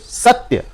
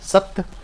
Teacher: स जो है उस पर हम लोग जोर लगा रहे हैं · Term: बलाघात